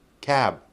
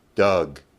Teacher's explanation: with the three voiced sounds, b, d, g, you have to lengthen the vowel.